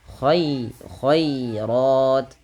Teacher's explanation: Kemudian al khairat, ya, lembutkan, dan di sini tipis khairat. Nah, ro-nya baru dibaca dengan tebal karena dia ra tafkhim berharakat fathah.